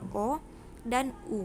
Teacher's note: adanya vokal bundar dan vokal tak bundar yang pertama vokal bundar vokal bundar ini karena bentuk mulut membundar ketika kita mengucapkan